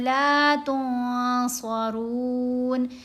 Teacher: صاد حروف احفا میں سے ہے، نون ساکن کے بعد آ رہا ہے، تو نون کی آواز کو ناک میں چھپایا بھی جائے گا اور اس کے اوپر ایک الف کی مقدار جتنا ٹھہرا بھی جائے گا